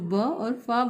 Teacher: दंत्योदय, दांत और ओष्ठ की सहायता से व और फ वर्णों का उच्चारण होता है।